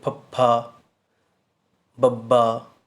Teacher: ਜਿਹੜੇ ਬੁੱਲ੍ਹ ਨੇ ਉਹ ਕੁਛ ਟਾਈਮ ਲਈ ਬੰਦ ਹੋ ਜਾਂਦੇ, ਰੁਕ ਜਾਂਦੇ ਹਨ